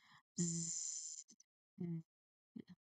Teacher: Not just hissing but buzzing. · you can start with a strong continuous buzzing sound. So you make the sound last a moment. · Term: letter Z